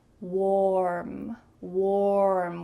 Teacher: Notice how my lips are in an O shape. Warm, warm, with a clear R.